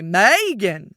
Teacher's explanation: My other grandmother would call me cuz she's a very southern lady and she would say Megan. So, all of the emphasis was on that very first syllable